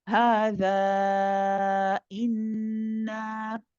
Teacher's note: after we say hadha, when we complete the 4 or 5 counts, our sound stops and then restarts for the hamza to give it that sharpness.